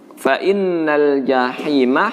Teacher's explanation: Di sini huruf ha tipis, dan ha yang tipis ini tidak boleh bercampur dengan suara serak-serak seperti di huruf kha. Meskipun keserakannya itu sedikit ya, serak-seraknya sedikit, namun itu belumlah sempurna.